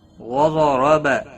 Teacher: ضاد اور را دونوں پور پڑے جائیں گے۔ ضاد حروف مستعلیہ میں سے ہے، پور پڑا جائے گا۔